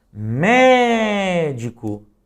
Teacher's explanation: note que o mé é a sílaba que mais se destaca. É a sílaba tônica.